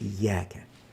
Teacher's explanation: الياء حرف ترقيق والألف التي جاءت بعدها يجب أن تبقى مرققة